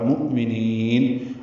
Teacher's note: حمزہ ساکن جھٹکے سے ادا ہوگا